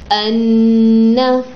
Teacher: پھر ہوتا ہے غنہ. غنہ ناک کی جڑ سے ادا ہوتا ہے